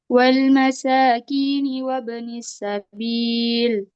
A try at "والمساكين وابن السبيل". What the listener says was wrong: Masih tebal. Ya, tebal itu karena ustazah dia lam itu makhrajnya di mana? Di belakang gigi atas. Lam itu dia makhrajnya tepi lidah. Iya, dia sama yang sama dengan lam itu adalah huruf dot.